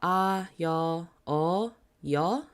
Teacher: when they add that extra line, it just adds like a Y sound to it